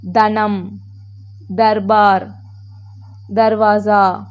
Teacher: द द கொஞ்சம் vibrate ஆகுது பாருங்க